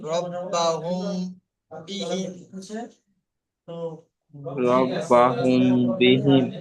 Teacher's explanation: মিম সাকিনের পর বা আসলে মিম সাকিনকে গুণনা করে করতে হবে